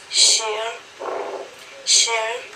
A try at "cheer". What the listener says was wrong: No, cheer, sheer. You're saying sheer, sheer. I say cheer, sheer.